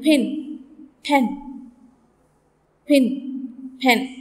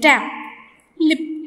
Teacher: the first consonant is P and it's articulated along with a puff of air. A small puff of air is also exhaled from your mouth as you say pin, pen, etc. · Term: aspirated P